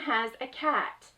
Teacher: include the S making the Z sound at the end of has